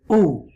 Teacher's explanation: the pesh mean Dhamma is pronounced by the rounding of the lips.